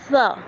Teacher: ہم نے دونوں دانتوں کے درمیان میں زبان کی نوک کو دبانا ہے اور پھر ہم نے اس کو پڑھنا ہے